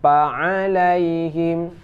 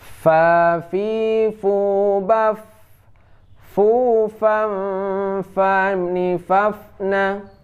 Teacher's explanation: Fa itu dibaca antara bibir bawah dan gigi atas.